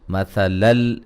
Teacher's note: غاد کو موٹا ادا کریں گے، را کو بھی موٹا ادا کریں گے، لفظ اللہ کی لام کو موٹا ادا کریں گے، اس سے پہلے حرف پر زبر ہے۔ مثلل یہاں نون تنوین کا ادغام بلا غنہ ہے